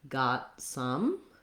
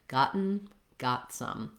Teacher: I wouldn't say got some, I would say got some, stopping the T and releasing right into the S of some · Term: stopped T